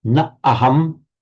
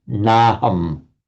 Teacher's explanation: That is a signal to the student that this is by Sandhi a merger of na plus aham. Na aham, the two vowels by Sandhi just merge into one to naham. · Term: merger of two vowels